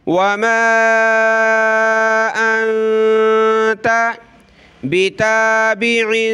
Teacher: نون ساکن ہے، اخفا کریں گے، یہاں تنوین کا وہی کلر ہے اخفا کا، ہم نے ناک میں آواز پیدا کرنی ہے۔